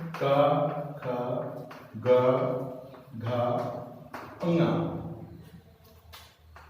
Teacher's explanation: का वर्ण, इसका उच्चारण स्थान कंठ होता है